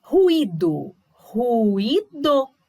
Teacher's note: cada uma das vogais, olha, ficou em uma sílaba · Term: hiato